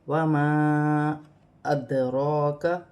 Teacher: مد منفصل، اسے 3 الف کی مقدار تک کھینچ کر پڑھا جائے گا